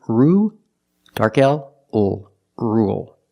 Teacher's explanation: With rule, we don't say rule. There's no y. It's just ru, dark L, ul, rule.